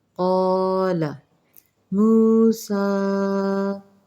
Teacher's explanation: سین کے اوپر کھڑی حرکات ہیں، اسے ہم نے 2 حرکات تک کھینچ کے پڑھنا ہے